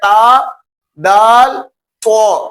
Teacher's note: जबान की नोक और ऊपर वाले दांतों की जड़ जहां पर जड़ मौजूद है खुरदरी जगह वहां से नोक लगे तो ये तीनों हरूफ अदा होते हैं।